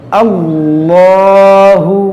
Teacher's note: یہاں پر دیکھیں اس میں جلالت اللہ عز و جل کا یہ نام ہے, اور اس سے پہلے زبر ہے, تو اس لام کو ہم موٹا پڑھیں گے